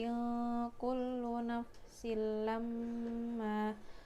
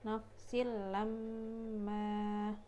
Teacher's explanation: Di sinnya itu ada tanwin, ada kasroten bertemu huruf lam, jadi kasrotennya langsung masuk ke huruf lam tanpa ada dengung. Nafsil lamma. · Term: idgham bila gunnah